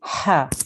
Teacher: Make sure this ha sound comes from your throat.